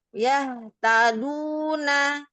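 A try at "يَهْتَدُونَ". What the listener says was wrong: Iya, Masya Allah. Barakallahu fiik. Alhamdulillah udah bagus.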